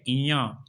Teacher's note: तो इनमें से जो नासिक की व्यंजन है वो है इया। इया को जब आप बोलते हैं तो आप देखेंगे कि आपके उच्चारण में नाक का बराबर सहारा लिया जा रहा है, हमारी नासिका को भी बराबर इसमें प्रयोग में लाया जा रहा है। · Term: नासिक व्यंजन